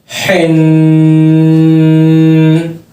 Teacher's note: حلق کے بیچ سے آواز آنی چاہیے. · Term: حروف حلقی